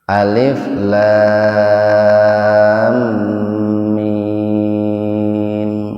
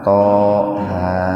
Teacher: Huruf lam dan huruf mimnya itu dibacanya panjang, lebih panjang dari mad lazim harfi mukhaffaf. Dibacanya panjang 4 sampai 6 ketukan. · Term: mad lazim harfi musabba